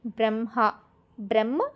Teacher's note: First ఆ వత్తుని ముందు పలికి తర్వాత హ ని పలకాలి బ్రహ్మ బ్రహ్మ హ ఫస్ట్ మకారం చదువుతున్నాం తర్వాత హ అని చదువుతున్నాము. నాలుగో · ఫస్ట్ మకారం చదువుతున్నాం, తర్వాత హాని చదువుతున్నాము